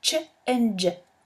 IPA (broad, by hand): tʃ and dʒ